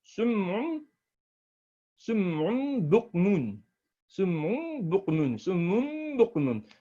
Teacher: Same way, you understand that a nasalization has to happen. If ba follows a nun saqeen or a tanween, then the sound of a nun for saqeen or for tanween will transform into mim. You have to have the nasalization once again.